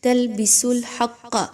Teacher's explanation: لام کو آپ نے بالکل بھی موٹا نہیں کرنا اور کسی طرح کا غنہ بھی نہیں کرنا